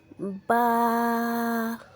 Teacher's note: دونوں ہونٹوں کے تر حصے سے با ادا ہوتا ہے۔ دونوں ہونٹوں کے تر حصے سے با ادا ہوتا ہے۔